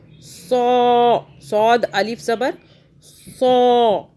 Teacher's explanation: सौ को हमने खींचा क्योंकि सौद के आगे अलिफ आ रहा है